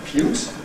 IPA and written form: kəmˈpjuːt (compute)